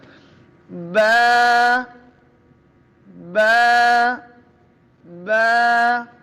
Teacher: جگہ پہ رہیں ہونٹ، اور یہ تری والے حصے سے ادا، دونوں ہونٹوں کی تری والے حصے سے با ادا ہوتا ہے ، یعنی اس کو میں ہونٹ کو اندر کی طرف لے